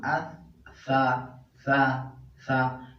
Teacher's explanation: ثا ادا کېږي د ژبې د سر او د مخامخ غاښونو د سرونو نه، د ژبې د دې سر نه چې کوم نوک ورته وایي په اردو کې، او د مخامخ غاښونو د سرونو نه.